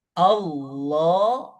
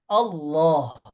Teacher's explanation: Al tuh masuk ke sini ke lam ke ee lisan ketemu langit-langit yang paling depan. Allah masuk lagi ke sini terakhir.